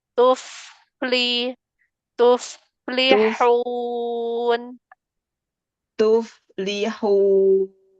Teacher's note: huruf fa-nya ngalir dulu biar tidak mantul.